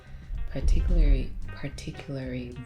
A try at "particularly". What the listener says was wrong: Oh, that's still not the word. You're missing the L. Particularly.